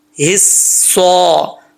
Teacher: स्वाद हरूफ मुस्ताजा में से है, ये मोटा पढ़ा जाएगा, चाहे इसके नीचे ज़ेर हो, ज़बर हो, ऊपर पेश हो, कुछ भी हो, ये मोटा ही पढ़ा जाएगा, यानी पुर पढ़ा जाएगा, ठीक है।